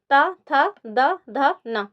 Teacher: जब आप बोलेंगे ना तो आप देखेंगे कि आपकी जो जीभ है वो आपके ऊपर के दांतों से पीछे साइड टकरा रही है। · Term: दंत वर्ण